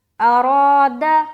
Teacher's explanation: اب یہاں را کے اوپر زبر ہے اور را کے ساتھ الف بھی لگ کر آ رہا ہے، یعنی کہ الف مدہ ہو رہا ہے. تو یہاں پر ہم ایک الف کھینچیں گے بھی اور آواز کو موٹا بھی رکھیں گے